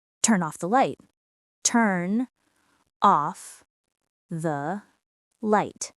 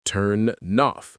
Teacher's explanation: The connection here is turn off. The N connects to the O and suddenly the phrase becomes one smooth sound. Turn off. This is exactly how native speakers say it in real conversations. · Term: connected speech